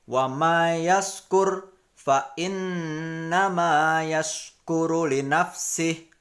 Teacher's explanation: Hukum bacanya adalah idgham ma'al gunah. Di sini cara membacanya agak ditekankan di huruf nun, kemudian agak dengung, ya. Jadi bacanya wa may yaskur fa innama yaskuru li nafsih.